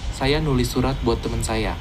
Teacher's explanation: Also notice that menulis loses its prefix, but it doesn't revert to its root form tulis. Instead, it maintains the nasal sound at the beginning.